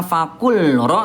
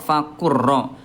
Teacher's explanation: langsung dilebur ke huruf yang kedua. Jadi bukan fakul ro tapi langsung ke ro, fakur ro.